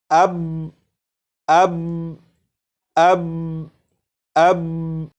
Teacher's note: یہ جو میں نے پڑھا اس میں با کو پڑھ کر آواز کو ختم نہیں کیا جا رہا بلکہ با کو پڑھ کر آواز کو روکا جا رہا ہے